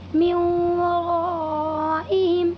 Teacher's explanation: یہاں پر بھی نون ساکن کے بعد یہ واو آیا ہوا ہے، اسی لیے اس میں ادغام ناقص ہوگا اور نون ساکن کو واو میں بدل کر غنہ کے ساتھ ادا کریں گے